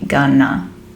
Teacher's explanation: Going to is often shortened to gonna when we're speaking quite quickly. So we tend to get rid of the t sound and we just merge those two words. Again, the to becomes t, but since we're dropping the t, it's just going to be gonna.